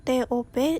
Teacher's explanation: Kata bahasa Inggris top diucapkan TOP dengan T apiko dan dental